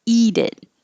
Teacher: when you say it together eat it that tea from eat will change to a d